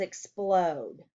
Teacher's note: the long O says its name in the second syllable.